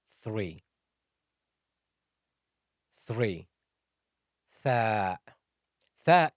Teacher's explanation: Thaa is pronounced from the tip of the tongue and the edge of the upper incisors touching the teeth. To produce this sound, you should be sticking your tongue out of your mouth, and the tip of your tongue should be showing.